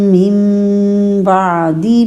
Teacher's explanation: مم یہاں پہ اقلاب کا رول ہے، نون بدل گیا میم میں، میم کو غنہ کرتے ہوئے ادا کیجیے